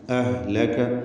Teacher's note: അവിടെ റഹാവ എന്ന സിഫത്ത് ഹിനുള്ളത് പ്രത്യേകം ശ്രദ്ധിക്കുക അയവോടുകൂടി